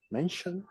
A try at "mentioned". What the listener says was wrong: It's not mentioned with T sound, but with D. Mentioned. Okay, mentioned.